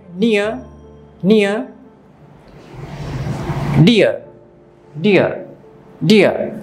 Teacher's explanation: দেখুন এখানে দুটো ভাওয়াল সাউন্ড, একটা হচ্ছে ই আর একটা হচ্ছে আ, তো দুটো মিলে হচ্ছে ইয়া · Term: ডিফথং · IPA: /ɪə/